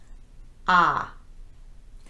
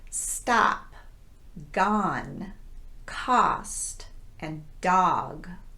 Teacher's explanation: the lips are not rounded at all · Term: short ah sound